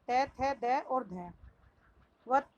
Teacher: दंत दांतों के मूल से